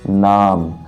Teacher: तो ना को जो पढ़ेंगे वो थोड़ा नाक से आवाज आएगी। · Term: नासिक